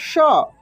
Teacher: तालभव्य श का उच्चारण तालु से होगा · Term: तालव्य श